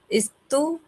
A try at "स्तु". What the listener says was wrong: स्तु नहीं, स्तु बस, इस लगान ई की जरूरत नहीं है।